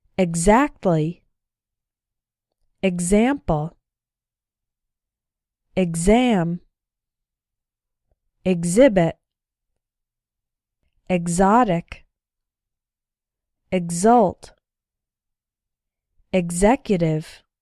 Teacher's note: The other way to pronounce X is like GZ, gz, as in the following words.